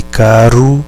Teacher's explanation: O R tem um som vibrante, certo? Como o nosso R entre vogais, de caro.